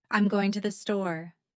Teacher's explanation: Which words do you hear clearly? Going and store. Those are the strong beats. The other words I'm to and the are weaker.